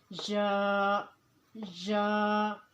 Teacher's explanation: یا کا مخرج، یا کی مقدار 1 الف کے برابر ہے، اور یا کا مخرج کا وسط زبان اور وسط تالو